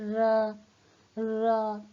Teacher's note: हमारी जीभ के अगले भाग के पास हवा में थोड़ा सा कंपन होता है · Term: प्रकंपित